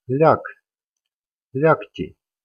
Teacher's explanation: this sound g also turns into k, because it's followed by this unvoiced consonant sound t. In the spelling we see letter g stand for hard consonant sound k, then this letter g may not be followed by the soft sign. · this voiced consonant sound g becomes unvoiced consonant k, because it's the final consonant in this word. And this sound g also turns into k, because it's followed by this unvoiced consonant sound t.